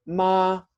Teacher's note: you would actually use a little macron for the high tone or high level pitch in order to say the word mother so you would say ma like that you have to sing